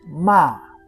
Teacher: Fourth tone. Sharp and falling like you are giving a command.